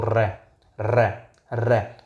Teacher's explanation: जिन व्यंजन का उच्चारण करते समय वायु जीवा के ऊपर से लुढ़कती हुई बाहर निकलती है, उसे लुंठित व्यंजन कहा जाता है। इस वर्ण का उच्चारण करते समय जीवा में कंपन भी होता है, इसे प्रकंपित व्यंजन भी कहा जाता है।